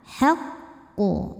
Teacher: yaitu qof yang sukunnya ini sukun karena waqaf atau karena berhenti maka q dipantulkan dengan pantulan yang besar · Maka qaf dipantulkan dengan pantulan yang besar. Nah, ini berbeda dengan qalqalah kubro biasa karena di sini ada tasydid, maka tasydidnya harus dibaca. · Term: Qalqalah kubra